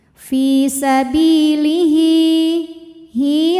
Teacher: karena ada hal damir diapit dua huruf hidup dan huruf setelahnya selain Hamzah maka ha panjang dua harakat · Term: Mad Silah qasirah